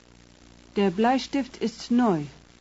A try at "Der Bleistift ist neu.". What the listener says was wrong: No. It's kind of neu, but it's not exactly, not too much E at the end. No. Der Bleistift ist neu. Let's listen to how he says neu.